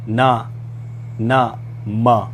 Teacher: जिन व्यंजनों का उच्चारण करते समय मुख्य अवयव वायु को रोकते हैं परंतु वायु मुख से न निकलकर नाक से निकलती है उन्हें नासिकीय व्यंजन कहते हैं